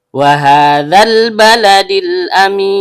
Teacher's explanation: Karena haknya berharokat fathah berdiri atau fathah panjang, maka hukum bacaannya mad tobi'i. Panjang 2 harokat dan setiap panjang keluar dari rongga mulut.